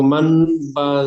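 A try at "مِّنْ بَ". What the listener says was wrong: মাম্বা দেখেন, প্রথমে যখন পড়ছেন মিম নুন যাবার মান, নুনটা পড়েন, কোনো অসুবিধা নুনটা পড়েন। কিন্তু তারপরে যখন বাটা পড়বেন, তখন কিন্তু এই ছোট মিম আছে, এই মিমটা পড়তে হবে, মাম্বা।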